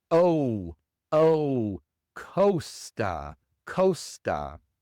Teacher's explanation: En la primera palabra costa, la o es una o larga inglesa. Es un ditongo. Es como si fuera o u.